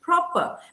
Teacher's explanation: PROPER is pronounced proper because in English, the final R is silent